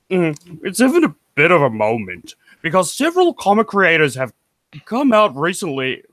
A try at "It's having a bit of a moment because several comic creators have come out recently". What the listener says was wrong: You need more nasal. Nasally.